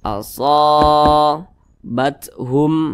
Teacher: yang posisinya itu tepat berada di belakang huruf alif dibaca panjang maka huruf Shad dibaca panjang Mad Thobi'i panjangnya dua harakat atau kira-kira dua ketukan